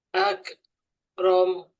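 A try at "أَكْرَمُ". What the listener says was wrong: Nah, itu lidahnya jangan sampai bawa ke depan. Agak tengah sedikit. Benturkan.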